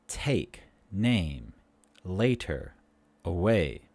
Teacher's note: The sound a is a mid-front tense vowel. A. Put the tongue in the middle of our mouth.